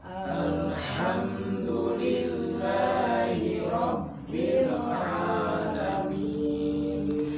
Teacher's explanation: di kata alhamdu itu huruf H keluar dari tenggorokan yang tengah